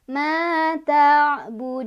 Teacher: Karena berhenti jadi sukun, jadi mati. Maka, cara bacanya dipanjangkan boleh 2, boleh 4, boleh 6. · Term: mad aridh lissukun